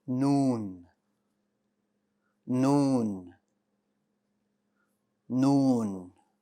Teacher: noon is pronounced as the following noon noon noon very good the letter noon is light that means the back of your tongue is going to stay flat and you're going to get this soft sound